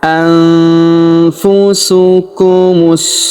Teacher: nun sukunnya melebur ke huruf. Kita baca dengung dan samar. Dengungnya kita tahan dua sampai harakat.